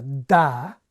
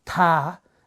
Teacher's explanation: Right, so when I say the difference between, say, a ta and a da, the big difference between those two sounds is not where they're made in the mouth, but actually the fact that my voice box switches on and starts buzzing a bit earlier in da than in ta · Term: onset of voicing